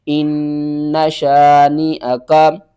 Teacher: نون مشدد ہے تو آپ نے یہاں پر غنہ کرنا ہے